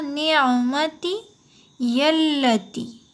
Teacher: اب یا کو ملانا ہوگا لام میں، لام کے اوپر تشدید ہے